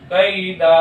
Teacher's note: تنوین کو الف سے بدل کر ایک الف کے برابر کھینچ کر حرف مدہ کی طرح پڑھیں گے، اس کو مد عوض کہتے ہیں۔